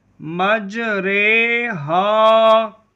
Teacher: زبر کو زیر کی طرف اور الف کو یا کی طرف مائل کر کے پڑھنے کو امالہ کہتے ہیں۔ امالہ کی را کو اردو کے لفظ قطرے کی را کی طرح پڑھیں، یعنی ری نہیں بلکہ رے پڑھیں۔ امالہ کے ہجے اس طرح کریں: میم جیم زبر مج، را امالہ والی رے، مج رے، ہا الف زبر ہا، مج رے ہا۔